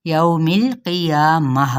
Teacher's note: لین کا قاعدہ ہو رہا ہے کیونکہ واؤ ساکن سے پہلے پیش کی بجائے زبر ہے، اس لیے یوم القیامہ۔